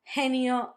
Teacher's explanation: very strong aspirated h from the English